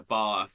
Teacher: The UK, like in the South part, they have longer vowels.